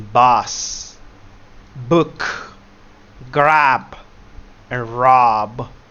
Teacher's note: The B sounds, they are united with 2 lips.